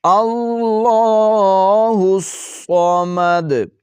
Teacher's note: صاد کو موٹا کر کے پڑھیں گے جماؤ کے ساتھ اور دال پر وقف کرتے ہوئے قلقلہ کریں گے